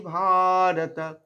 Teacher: ভা দীর্ঘ করে রত